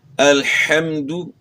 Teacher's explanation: تو الحمد پڑھنے، ہا کی آواز گلے کے درمیان سے ادا کرنی ہے